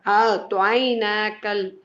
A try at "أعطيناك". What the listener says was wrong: நீங்க அதை நீட்டித்தான் அலிஃப் எடுக்கணும், அப்பதான் அலிஃபுக்குரிய டைம் கிடைக்கும் எழுது. அஅطينا. நூனை நீட்டுற அளவுக்கு தான் எங்களுக்கு அலிஃபை தெளிவா சவுண்டுக்கு உச்சரிக்கலாம்.